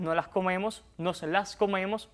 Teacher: vean ahí, también ya aspiré, como en fonética se podría llamar, aspiramos estas S a veces